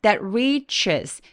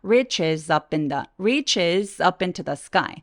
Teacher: 포인트는 re 굉장히 긴 음이고 리가 아니라 리 하면 안 돼요 re 해서 입술을 쭉 내밀어주고 혀를 뒤쪽으로 당겨 주시는 발음으로 꼭 내주세요